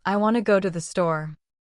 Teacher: In this sentence, want and store are stressed and the other words are said quickly and softly. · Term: Sentence stress